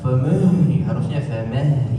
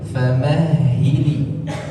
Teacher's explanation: Huruf ha keluar dari tenggorokan bagian pangkal, bagian dasar, bukan dari dada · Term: hak kecil